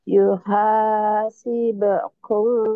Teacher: bibir sih mingkem tapi ke hidung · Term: ikhfa syafawi